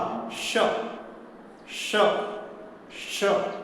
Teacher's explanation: हम श बोलते हैं तो जीभ का मध्य भाग तालु को हल्का स्पर्श करता है और कंठ से जो हवा आती है, वह हवा पहले तालु में तालु और जीभ में टकराती है। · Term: ताल श